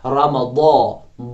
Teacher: شہر رمضان، را پر زبر ہے تو را موٹا پڑا جائے گا، میم کو جو ہے باریک پڑا جائے گا چونکہ اس میں صفت استفعال ہے۔ رمضان، ضا جو ہے صفت استعلا ہے اس میں، اس لیے ضا کو موٹا پڑا جائے گا